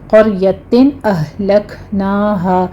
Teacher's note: ہا کو لے جا کے اقصی حلق میں سٹاپ کریں گے اور کاف پر حمس ہوگا۔ فجاءہا میں بھی اسی طرح سے مد متصل واجب ہے، 5 کاؤنٹ کر لیں گے اور ہا میں الف مدہ۔